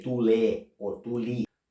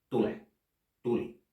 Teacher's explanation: So to sound Finnish and to be clear, you should keep the ending unstressed, but at the same time make this difference between e and I.